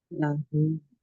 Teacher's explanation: dibaca 2 harokat saja ya, dibaca 2 harokat karena sesudahnya bukan huruf hamzah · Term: mad silah